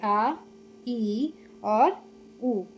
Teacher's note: निर्नुनासिक होते हैं जिनके उच्चारण में केवल मुंह से हवा निकलती है, वो निर्नुनासिक होते हैं।